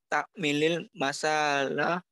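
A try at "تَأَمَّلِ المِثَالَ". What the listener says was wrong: Misal, ta'ammal bukan ta'mil. Ta'ammal al-misala.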